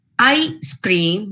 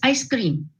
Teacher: both of them have the same sounds in the same sequence but the difference is in the pause or the gap between the two sound segments